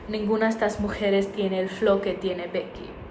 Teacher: Instead of being pronounced like J, it's pronounced like H, the English H sound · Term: The J in Spanish